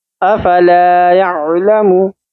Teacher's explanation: ला एक अलिफ के बराबर खींचनी है क्योंकि अलिफ मद्दा है